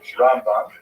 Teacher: Rambam is pronounced with the emphasis on the first syllable.